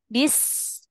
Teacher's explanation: Nah, di antaranya huruf sin itu memiliki sifat namanya sifat rokholah. Jadi ketika dia sukun, ya, dia ditarik suaranya. mengalir tuh suaranya.